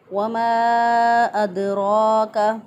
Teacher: वमा अदराका, 2 अलिफ के बराबर इसको लंबा करके पढ़ेंगे। दाल साकिन पर कलकला होता है, क्योंकि यह हरूफ कलकला में से है